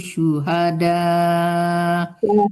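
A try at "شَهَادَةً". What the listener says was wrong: Bukan syuhada, tapi syahada.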